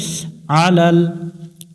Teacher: আইন গলা চেপে উচ্চারণ করতে হবে